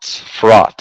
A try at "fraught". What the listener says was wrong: It's the T sound at the end. You need to make sure to enunciate that T.